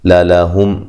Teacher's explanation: یہاں میم ساکن کا اظہار ہے، غنہ نہیں کریں گے